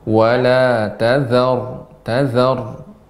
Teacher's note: Zannya tetap tipis Ibu.